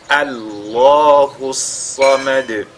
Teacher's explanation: Et comme la lettre lam est précédée donc par le A, alors cette lettre lam, elle est lue avec at-tafkhim. Et il faudra que ce soit elle seulement qui soit lue avec at-tafkhim.